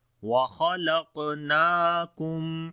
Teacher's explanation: Kha and qaf we read in heavy sound, and on the qaf we make qalqala as well, which is the weak qalqala again. Noon we long due to standing fatha on it